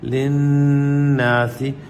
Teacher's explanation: نون پہ غنہ، نون مشدد کا غنہ ہے